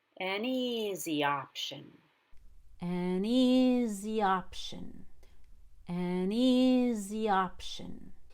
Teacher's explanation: we don't want neezy to be heard we want the e to be higher